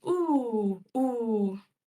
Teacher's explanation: I know that that's a back vowel by the way it's positioned in the chart, but I say it towards the front.